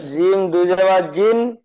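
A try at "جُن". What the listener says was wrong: দুজাবার না, দু পেশ, জিম দু পেশ জুন। দুন না, জুন জুন। জিম দু পেশ জুন।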